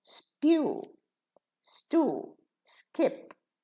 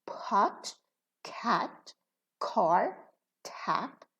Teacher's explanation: we pronounce pa, ka, and ta with a puff of air